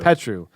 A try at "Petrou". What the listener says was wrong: Yeah, he's putting the accent on the wrong syllable.